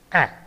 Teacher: A is a front unrounded vowel below the half open position